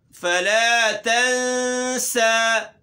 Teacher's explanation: تنسى اخفا ہوگا اور سین میں سختی پیدا ہوگی